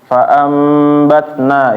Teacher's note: nun mati atau tanwin bertemu dengan huruf ba berubah menjadi huruf mim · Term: Iklab